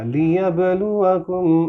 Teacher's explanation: آپ نوٹ کریں با کی آواز میں آپ کو تھوڑا باؤنس نظر آئے گا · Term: قلقلہ